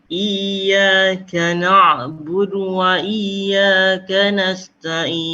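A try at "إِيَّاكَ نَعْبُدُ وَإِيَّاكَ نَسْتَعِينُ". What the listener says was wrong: Cuma na'in, huruf ain jangan masuk hidung. Nasta'in. Tapi kena di tengah. Nasta'in. Yang nasta'innya tu. Nasta'in. Tengah. Nasta'in.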